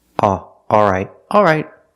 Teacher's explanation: some people don't pronounce the L but they keep the same vowel